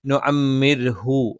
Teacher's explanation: നമ്മൾ ശബ്ദം നേർപ്പിച്ചാണ് പറയുക. നാവിന്റെ മധ്യഭാഗം മുകളിലേക്ക് ഉയരില്ല.